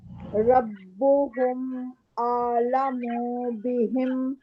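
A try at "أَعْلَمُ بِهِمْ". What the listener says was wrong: اعلم بہم اعلم منہ نہیں کریں گے اسٹریچ نہیں کریں گے یہاں مد نہیں ہے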